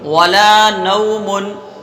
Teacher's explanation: واولین کو بھی بغیر کھینچے، بغیر جھٹکا دیے پڑھیں گے